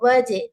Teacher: واو فتحہ جیم سکون، وجہ، جیم پر قلقلہ